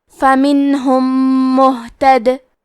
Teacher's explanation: یہاں حکم ہے ادغام متماثلین صغیر، تو ہم میم ساکن کو دوسرے میم میں ملا کے ایک ہی میم غنہ اور تشدید کے ساتھ پڑھیں گے